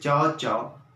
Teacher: हमारी जीभ भी तालु वाले भाग को स्पर्श करती है।